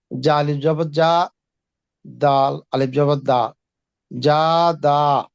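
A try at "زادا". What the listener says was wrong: যা, এটা জিমের মতো হয়ে উচ্চারণ হতেছে। যা, যা।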